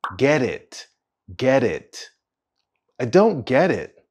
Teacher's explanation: you'll hear that linking between the two words get and it.